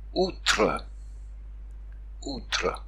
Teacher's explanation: Si ce O est suivi d'un L, ce L, au XIIIe siècle, s'est déjà transformé en OU, mais ça ne se voit pas encore dans la graphie.